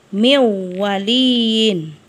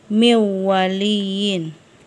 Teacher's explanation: Jadi dilebur nanti huruf nun mati atau tanwin seolah-olah tidak ada. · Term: idgham bi gunnah